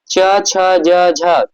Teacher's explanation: च वर्ग के सभी जो वर्ण होते हैं क्या होते हैं तालव्य से उच्चरित होते हैं